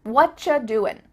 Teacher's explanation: You might notice too, extra tip, that the end of the word doing, that G, also gets cut out.